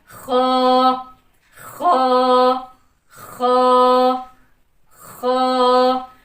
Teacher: ख हम अदा करेंगे अदना हलक से। हलक का पहला हिस्सा। हलक का पहला या मुंह की तरफ वाला हिस्सा। · लेकिन ख को हमने अदना हल से पढ़ने के साथसाथ इसको हमने मोटा भी करना है। ये मोटे हरूफ में से है। · خا کو ہم نے ادنا حلق سے پڑھنے کے ساتھ ساتھ اس کو ہم نے موٹا بھی کرنا ہے. یہ موٹے حروف میں سے ہے.